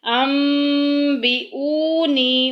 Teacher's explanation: انبئونی، غنے کے ساتھ، انبئونی، او کو کیوں لمبا کیا ہے؟ کیونکہ واو ساکن پیچھے پیش آ گئی، واو مدہ کا قاعدہ جاری ہو رہا ہے۔